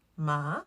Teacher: Now we will go on to the second tone. The second tone actually sounds like you're asking a question. So you're going to go from a lower level, a mid-level of your voice, and you're going to raise it to your first tone. · The second tone actually sounds like you're asking a question. So you're going to go from a lower level, a mid-level of your voice, and you're going to raise it to your first tone. So you're just going to be like, ma.